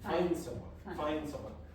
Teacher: Very often the D disappears as well.